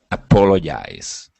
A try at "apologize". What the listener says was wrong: Let's talk about the J. So right now you're saying apologize. okay, pronouncing more of a Y sound, yais, okay? That G makes a J sound. Now, the difference with the J is that you'll have the vibration right here in your throat, okay? It's a voiced sound, okay?